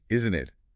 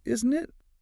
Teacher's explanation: if your voice goes up on isn't it? It's a real question. But if it goes down, it's more about seeking agreement. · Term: intonation